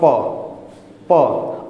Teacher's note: तो कैसे बोलेंगे अरे प बोलने के लिए किसका स्पर्श होगा होठ का स्पर्श होगा दोनों होठों का स्पर्श होगा · होंठ का स्पर्श होगा, दोनों होंठों का स्पर्श होगा, प। और इन पांचों में ये जो प वर्ग है इसका उच्चारण आसानी से हो जाता है, इसका उच्चारण बड़े आसानी से होता है।